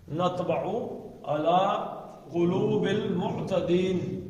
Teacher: موٹا پڑھنا توئے کو, پتلا نہیں پڑھنا